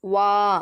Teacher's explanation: இந்த நூனை நம்ம அழுத்தி குன்னா செஞ்சு ஓதணும் அலிஃப்க்கு முன்னாடி ஜபர் வந்திருக்கு இரண்டு விரல்கள் நீட்டக்கூடிய அல்லது மடக்கக்கூடிய அளவு நம்ம நீட்டி ஓதணும்